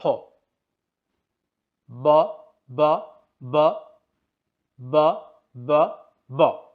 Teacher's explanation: দেখতেই পেলেন ফি এর যখন উচ্চারণ করলাম তখন টিস্যু পেপার খুব বেশি নড়াচড়া করছিল, এবং বি এর উচ্চারণ যখন করছিলাম তখন টিস্যু পেপার নড়াচড়া করেনি বললেই চলে